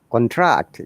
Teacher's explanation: falling to rising we call it falling into rising intonation